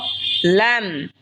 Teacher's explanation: লাম জিহ্বার আগার কিনারা সামনের ওপরের মারির দাঁতের সঙ্গে লাগা উচ্চারণ হবে লাম